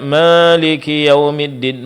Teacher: mencampur pengucapan huruf alif dengan sedikit bunyi dari huruf ya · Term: imala